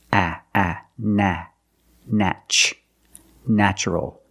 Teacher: The first syllable is pronounced with the short A, like black cat.